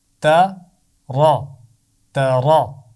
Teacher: تو دونوں آوازوں کو ملا کر پڑھنا ہے، لیکن ایسے پڑھنا ہے کہ تا باریک رہے گا اور را موٹا رہے گا